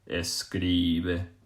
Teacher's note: you're just going to be pushing down on that second last syllable and coming up with the e sound e so if we